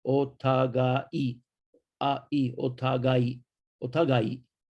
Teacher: Now the AI is two beats, two sounds. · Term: double length vowel